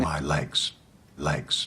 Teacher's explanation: he has very dark l sounds with a bunched back of the tongue